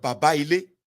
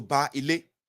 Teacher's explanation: The two A's coalesce and the I is absorbed in them, being represented by a prolongation of the tone.